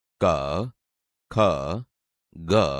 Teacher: તમે જોશો કે તે ગળામાંથી બોલાય છે, તેથી આ કંઠ્ય વ્યંજન છે.